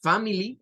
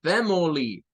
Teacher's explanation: Con una schwa en medio.